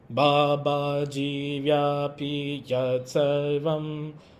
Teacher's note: So you have a very Western approach of rising tone, which like when you chant the syllables, Baba Jivyapi Yat Sarvam, going up, up, up.